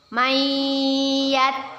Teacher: kita masukkan huruf nun sukun nya kepada huruf ya dengan berdengung dan ditahan dua harokat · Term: idgham bighunnah